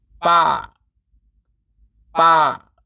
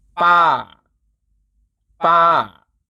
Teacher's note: The falling tone starts high and drops. Change the mouth by opening both upper and lower jaw to reach the high pitch.